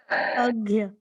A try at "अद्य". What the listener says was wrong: हाँ, घ नहीं है, द है, द, अद्य।